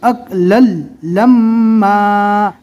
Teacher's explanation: यहाँ पे मिम को एक अलिफ के बराबर गुन्ना करके पढ़ना है और दो ज़बर है इसलिए अलिफ मद्दा पढ़ना है।